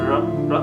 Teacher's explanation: If we hold the throat with the hand and produce the sound r, r, we feel the vibration. As we feel the vibration, it's a voice sound.